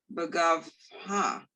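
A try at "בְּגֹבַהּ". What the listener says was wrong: No, it's the vowel. 2 dots.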